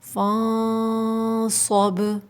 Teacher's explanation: اخفا کریں گے نون ساکن میں اور صاد کو موٹا پڑھیں گے